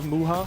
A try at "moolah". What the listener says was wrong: Moolah. Yeah, it's got the L in it.